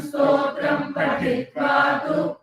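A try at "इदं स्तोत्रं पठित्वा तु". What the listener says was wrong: So here it is pathi. So it is the second ta, pathi. Pathitva. It is not patitva, it is pathitva. Idam stotram pathitvatu.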